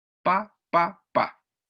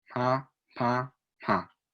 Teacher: No hay presión, no hay explosión de la P. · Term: baja presión